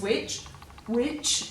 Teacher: when you say this witch witch there's no air after the W